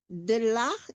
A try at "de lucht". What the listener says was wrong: Bukan de lach, lach itu tawa, tapi de lucht. Bunyi o, de lucht.